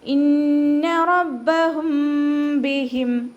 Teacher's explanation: ഇന്ന റബ്ബഹും ബിഹിം റ ഫത്തഹ ആയതുകൊണ്ട് ഉയർത്തിയിട്ട് വേണം ഉച്ചരിക്കാൻ. ബ ശബ്ദ വന്നു, അപ്പോൾ 2 ഹർഫുകൾ ഉച്ചരിക്കുന്ന കനം കൊടുക്കുക